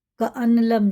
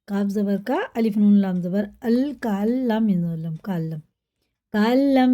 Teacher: کریں گے، فَأَصْبَحُوا فِي دِيَارِهِمْ جَاثِمِينَ، سا باریک ہوتا ہے، کَأَلَّمْ جب نون پہ جزم ہوتا ہے نا پھر تشدید والا حروف ہوتا ہے اس سے آگے، تو اس نون کو ہجے میں لگائیں گے، روا میں اس کو بالکل بھی نہیں پڑھیں گے ، کَأَنْلَمْ نہیں کریں گے، کَأَلَّمْ کاف زبر کا الف نون